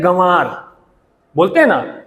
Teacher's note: तो दूसरा अक्षर जो है उस पर बलाघात दिया जा रहा है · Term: शब्द बलाघात